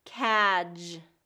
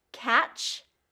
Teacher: a lot of times instead of that j sound and getting that voice on, it becomes the ch sound